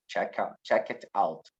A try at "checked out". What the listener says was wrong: Not check it, checked out. Checked out.